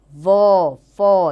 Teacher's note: दंतोष्ठ्य, व, फ, यानी दांत और होंठ दोनों का आपस में मिलना।